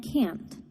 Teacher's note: This can especially happen when we say the verbs can and can't. Native English speakers don't always clearly pronounce the negative nt sound at the end of can't